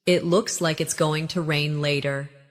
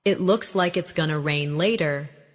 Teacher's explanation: In connected speech, going to becomes gonna.